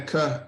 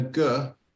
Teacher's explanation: the difference between a cur and a gur is whether you use your voice box or not your lips are the same the top your mouth is the same it's just whether you're vibrating your vocal cords or not sometimes